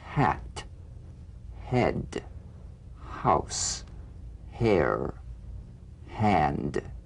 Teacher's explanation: Feel nothing more than a slight hesitation before the vowel. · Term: gentle H